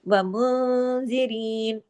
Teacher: नून साकिन के बाद ये देखिए इसमें जाल है, यहाँ पे इख्फा हकीकी गुन्ना कामिला हुआ। व मुंजिरीन, अगर रुकेंगे तो नून के जबर को हम रोक देंगे।